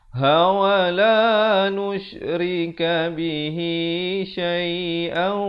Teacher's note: Di sini idgham bi gunnah. Asalnya syai'an, hamzah tanwin 2 di atas, tapi bila datang waw kena dengung 2 harakat.